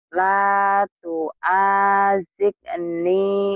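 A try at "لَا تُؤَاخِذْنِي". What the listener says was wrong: Bukan tu ajid, tu akhid.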